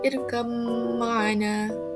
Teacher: Selain itu, kita dapat lihat pada kalimah irkam ma'ana, yang di mana Thoriq Syatibi dan juga Thoriq Jazari membacanya secara idgham, iaitu memasukkan huruf ba itu ke dalam mim, iaitu dengan membacanya irkam ma'ana.